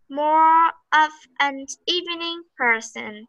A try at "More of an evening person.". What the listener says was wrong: Wow! Perfectly done.